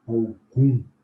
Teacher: não tem o M pronunciado, né? Nós pronunciamos o U nasalizado.